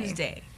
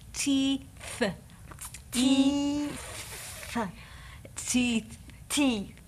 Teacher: your tongue will be behind your teeth for the T sound, and between your teeth for the th sound.